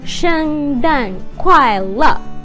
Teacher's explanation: Merry Christmas it's easy to remember because they're all four tones they're all the sharp drop tone